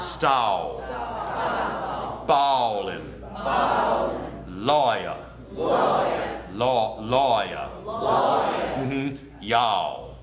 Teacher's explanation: the AH becomes oh